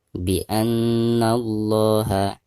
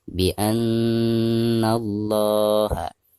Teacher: Nun yang bertasdid merupakan salah satu huruf gunnah. Jadi cara membacanya harus ditekankan sekaligus digunakan.